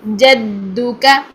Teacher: جیم کا جو ساؤنڈ ہے وہ چے کی ساؤنڈ نہیں آنی چاہیے